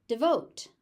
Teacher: first syllable is very short. All of the stress stress goes into the second syllable.